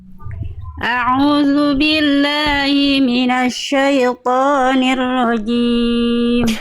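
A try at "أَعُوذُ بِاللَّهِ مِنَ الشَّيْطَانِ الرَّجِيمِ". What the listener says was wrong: Jelaskan hi-nya. A'udzu billahi. Hi-nya tadi kayak kurang jelas. Hi, jangan khofa. Nafas dan suaranya jelas mengalir. A'udzu billahi minasyaitonir rajim.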